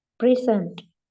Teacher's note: The noun present has stress on the first syllable.